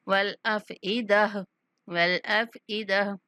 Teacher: با پر کلکلا، والابصار والافئدہ، یہاں جو گولتا آ رہی ہے، گولتا کو وقف کی صورت میں ہا سے بدل دیتے ہیں